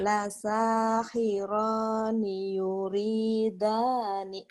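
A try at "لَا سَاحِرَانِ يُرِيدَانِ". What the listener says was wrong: Iya, tinggal ninya tengahnya pendek. La sahirani yuridani gitu.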